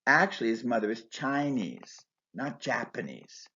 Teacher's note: Here, Japanese and Chinese take stress on their normally unstressed first syllables to show contrast.